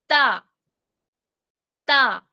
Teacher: हुरूफ निताइया का जो मखरज है वो इसी जगह से अदा करना है। हमने अपनी नोक लिसान को उठाकर निताई पर लगाई और हर्फ अदा किया · حروف نطعیہ کا جو مخرج ہے وہ اسی جگہ سے ادا کرنا ہے. ہم نے اپنی نوک لسان کو اٹھا کر نطعی پر لگائی اور حرف ادا کیا